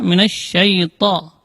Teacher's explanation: ujung lidah berada di usul sanaya, di pangkal gigi seri atas.